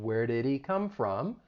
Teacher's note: this is when sounds get removed and this can often happen with the H sound in words like he him or her